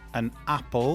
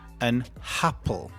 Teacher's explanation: they add an extra H sound before a vowel. So, for example, instead of saying an apple, they would say an happle.